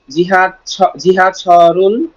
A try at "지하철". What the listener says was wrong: তবে জিহা হবে না, হবে ছিহা। ছিহা, এটাকে ইচ্ছাকৃত হবে হালকা করে ফেলবেন। ভসু, কিন্তু জিহাটা ছিহা।